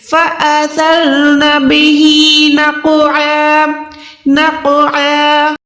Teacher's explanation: سا کی ادائیگی کرتے ہوئے آپ نے زبان کو باہر نکال کے اوپر والے دانتوں سے ٹچ کرنا ہے، اس میں آپ نے وسل ساؤنڈ یعنی سیٹی کی آواز نہیں نکالنی، اس کو بالکل آپ نے سافٹ لے کر نرمی سے ادا کرنا ہے۔